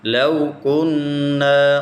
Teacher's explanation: لو کننا، وہ جو ہے وہ ساکنہ ہے اور پیچھے جو ہے فتح ہے، اگر ضمہ ہوتی پیش ہوتا تو اس کو ہم کرتے یہ وہ مدہ ہے، لیکن چونکہ یہاں پر وہ کے سے پہلے زبر ہے تو ہم اس کو پڑھتے ہیں وہ لین، حروف لین ہے، اس کو ہم نہیں کھینچیں گے